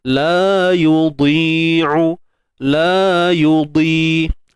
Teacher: Dad ni walaupun dia baris bawah tetap tebal. Sebab dad ni tebal selama-lamanya. Tak kisahlah dia baris macam mana pun.